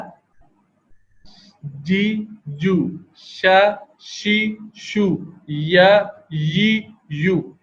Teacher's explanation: یہ حروف زبان کا درمیانی حصہ اوپر اس کے بالمقابل تالو پر لگنے سے ادا ہوتے ہیں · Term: حروف شجریہ